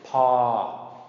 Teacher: pa, long mid-tone, P sound, pa, long mid-tone